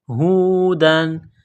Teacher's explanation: تنوین کے بعد حمزہ ہے، حروف حلقی ہے تو تنوین پر غنہ نہیں کریں گے